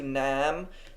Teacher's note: n will generally be pronounced L by most Hong Kong Chinese